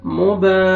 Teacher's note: ٹھیک ہے، آگے یہ فتح الف صغیرہ ہے، الف مدہ کے قائم مقام، آپ نے با کو کھینچنا ہے